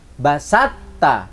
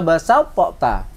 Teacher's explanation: harus dimasukkan suaranya to kepada ta secara menyeluruh sempurna. Basatta, tidak usah basau po ta. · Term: idgham